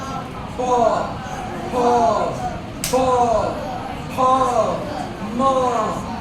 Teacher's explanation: जब प बोलोगे ना तो देखना यह ओठ सटेगा फ म ये सब में ओठ चिपक रहा है · प फ फ फ म, ये सब में ओठ चिपक रहा है। अगर कोई ऐसे खोल करके कहे कि मैं प बोल लूंगा, नहीं बोल पाएगा। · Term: ओष्ठ, ओष्ठौ